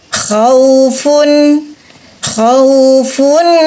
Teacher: teman-teman ada hukum izhar izhar Hal karena huruf Ain huruf harq suara nun sukun di tanwin dibunyikan dengan jelas